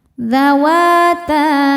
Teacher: Wa hukumnya mad tobi'i karena ada alif didahului harokat fathah, maka wawunya panjang 2 harokat.